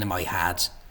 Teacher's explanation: some people in Dublin say the E vowel, as in dress, as a lowered so it almost sounds like an A